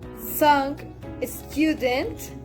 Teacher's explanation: The tip of the tongue and the sides of tongue are raised up to the top of the mouth, creating a narrow gap. The place of articulation is alveolar.